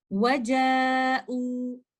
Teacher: I will recite waw mad by giving two counts of madul badal